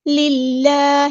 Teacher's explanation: اللہ کا لام ہم یہاں پہ باریک پڑھیں گے. للہ, کیونکہ اس سے پہلے زیر آئی ہے, لام پہ زیر آئی ہے تو اس لیے ہم اللہ کا جو لام ہے وہ باریک پڑھیں گے.